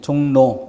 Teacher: 종로 이것은 그 발음이 종로, 리을이 니은으로 이렇게 소리가 나는 것이고